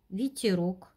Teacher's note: Следующая буква, буква Е, обозначает звук И, ветерок. Этот звук гласный, безударный.